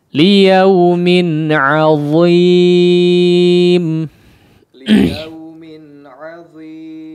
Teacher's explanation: huruf dha-nya ya ditebalkan tetap ya meskipun dia berharakat kasrah.